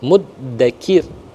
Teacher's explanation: kita waqaf di akhir ayat ke-15 dengan ra-nya dibaca tarkik